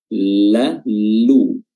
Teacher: ujung lidah bertemu dengan langit-langit gigi bagian depan, langit-langit mulut depan, la, lu, dan bibir dimonyongkan ketika berharakat dhammah. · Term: lam